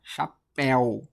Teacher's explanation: A gente fala chapéu, acentua esse ditongo aberto.